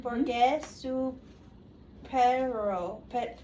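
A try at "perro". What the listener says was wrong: That's Pedro. You said Pedro.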